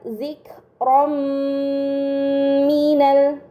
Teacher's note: Ini dinamakan idgham bi gunnah. Maka fathah tain harus dibaca secara melebur dengan gunnah yang dipanjangkan